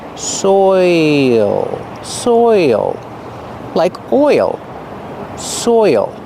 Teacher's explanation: You have the oi sound followed by the dark L. Soil. There's an extra sound there. · Your mouth has to open a little bit to make the dark L, and there's an extra sound. Listen, soil, soil, like oil, soil.